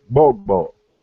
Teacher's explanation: that GB sound is a simultaneous pronunciation. So you say bogbo, you have to say both of those phonemes at the exact same time